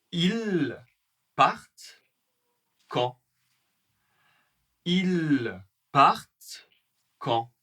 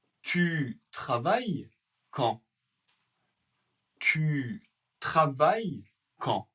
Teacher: avec l'intonation de la voix, une intonation montante